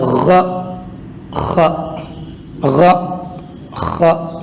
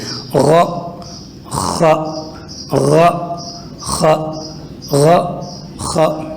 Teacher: یہ دونوں حروف ادا ہوتے ہیں گلے کے بالکل شروع والے حصے سے جو کہ منہ کے زیادہ قریب ہے